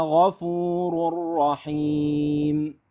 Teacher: قطره نفس ما في ليش لان الغين والخاء متجاورتان في المخرج الخاء يجري فيها الصوت والنفس الغين الصوت من غير نفس